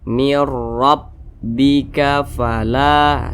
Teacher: ro dia dibaca tkhim dibaca tebal karena huruf ro berharakat fathahah maka huruf ro dibaca tebal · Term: tafkhim